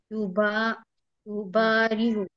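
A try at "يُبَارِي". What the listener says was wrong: না না, জের হবে।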